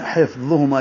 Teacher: ہا پہ ہمس ہے، حفظ وا پر ہے موٹا کریں گے، زبان کی نوک سامنے والے دانتوں اوپر والے دانتوں کے کناروں سے لگائیں گے